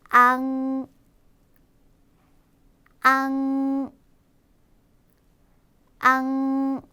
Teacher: 그냥 앙이 아니라 앙이라고 해서 콧소리, 코가 떨리는 느낌을 같이 내주셔야 돼요.